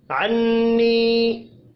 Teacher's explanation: नून मुशद्दद पर गुन्ना करेंगे, या मद्दा को एक अलिफ के बराबर खींच कर पढ़ना है।